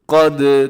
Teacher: دال کو ہلانا ہے کیونکہ دال حروف قلقلہ میں سے ہے